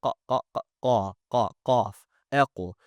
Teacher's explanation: the letter qaf comes from the rear of our tongue in conjunction with our uvula, specifically from the backside of our uvula, where it is soft and meaty